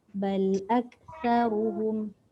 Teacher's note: Ta hujung lidah keluarkan sikit.